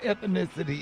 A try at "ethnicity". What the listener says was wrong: ethnicity baby ethnicity you added an i in there